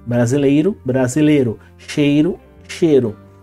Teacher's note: o e ele vem antes de um R Então você tem monotongação